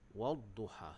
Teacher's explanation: Tetapi di sini di atas huruf lam ada tidak ada tanda sukun, maka kita masukkan huruf lam itu ke dalam huruf dad. Jadi bacaan dia adalah idgham.